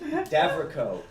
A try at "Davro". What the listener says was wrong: Stop adding echo to my name. Davro.